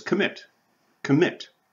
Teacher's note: submit submit so single consonant preceded by a single vowel and the stress is on the second syllable